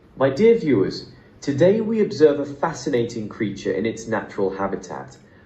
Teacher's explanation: Gentle, breathy voice, refined British accent.